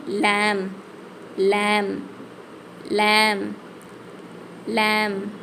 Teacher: இந்த எழுத்து நுனி நாக்கால மேல் பருக்களோட ஈறுகளுக்கு கொஞ்சம் தள்ளி வச்சு உச்சரிக்கணும் ஏற்கனவே நம்ம ரா உச்சரிச்சோம்ல அதே இடத்துல இருந்து லேம் லேம் லேம் லேம்